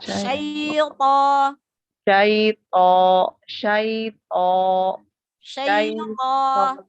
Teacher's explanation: memang bunyi vokalnya yang keluar seperti huruf O, tapi kita tidak boleh memonyongkan mulut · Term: huruf tebal